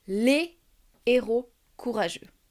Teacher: Je ne peux pas faire de liaison entre les et héros. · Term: H aspiré